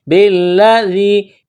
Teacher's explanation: با کو لام کے ساتھ ملانا ہے، لام میں سختی کرنی ہے